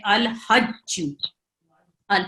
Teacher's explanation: لام ساکن کے بعد ہا آ رہا ہے، تو ہا حرف قمری ہے، اس میں لام کو اظہار سے پڑھیں گے. الحج، ال پڑھا جائے گا.